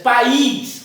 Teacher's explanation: País, aí o I passaria a ter uma tonalidade forte.